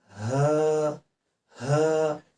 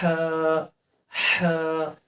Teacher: چھوٹا والا ہا جو ہے یہ نچلے والے حصے سے ادا ہوتا ہے، بڑے والا ہا جو ہے یہ وسط حلق سے ادا ہوتا ہے، یعنی درمیان حصے سے.